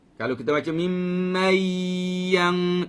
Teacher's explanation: kalau kita baca mimman yang itu tak dengung, kerana dengung adalah suara yang keluar dari hidung.